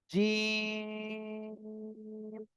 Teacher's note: এরপরে আমি এটা এখন সবার কাছে আরেকবার বলছি, দেখেন। জিহ্বার মাঝখান তার বরাবর উপরে তালুর সঙ্গে লাগিয়ে শক্ত আওয়াজে জিম অক্ষরটি উচ্চারণ হবে। জিম, 3 আলিফ টান হবে।